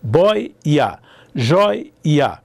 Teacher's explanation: Então, isso aqui se chama iode, que é quando a semivogal se desdobra, ela está entre duas vogais e ela tenta ser duas semivogais.